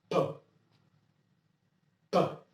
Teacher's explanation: इसमें sudden blast जो है वो होता है